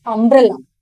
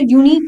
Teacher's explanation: umbrella has the vowel sound and unique has the consonant sound, YU. So here it should be a unique incident.